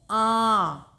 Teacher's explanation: देखिए आप मुंह से और नाक से भी इसमें दोनों में से ध्वनि निकल रही है। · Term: चंद्रबिंदु की मात्रा